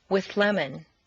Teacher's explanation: see how the TH moves back and the L moves forward to meet in a new middle position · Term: composite sound